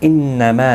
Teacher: نون مشدد پر غنہ ہوگا